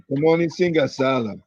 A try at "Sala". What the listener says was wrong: There's no long vowel there, we just Salah. We have a long vowel here, that's good. Now, remember, this is a long vowel, not here. Salah.